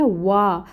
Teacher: پھر آگے آ رہا ہے وا، الف ساکن سے پہلے، الف ساکن سے پہلے زبر کی حرکت ہے تو وا پہ الف مد ہو رہی ہے، 2 کاؤنٹس لمبا پڑھیں گے